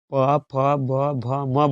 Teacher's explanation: प, फ, ब, भ, म बोलिएगा तो दोनों होठ आपस में सट जाएगा, इसलिए प, फ, ब, म का ओ से ओष्ठ।